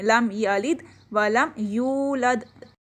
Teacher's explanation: لم یلد میں ہم میم پہ غنہ نہیں کر رہے، اظہار کر رہے ہیں، آواز کو ہم کلیئر کر رہے ہیں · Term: اظہار شفی